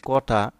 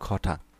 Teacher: এখানে কিন্তু কটা কিন্তু অল্প বাতাস, যখন তুমি উচ্চারণ করবে মুখ থেকে কিন্তু অল্প বাতাস বের হবে। আর খটা যখন বলবে খ, তার মানে এখানে মুখ থেকে হচ্ছে বাতাসটা একটু বেশি বের হবে। তো শব্দগুলো উচ্চারণের সময় মুখের সামনে একটু টুকরা কাগজ ধরে পরীক্ষা করতে পারো।